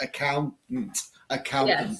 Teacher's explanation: though it is spelled with a t t a n t i don't really pronounce the penultimate T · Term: glottal stop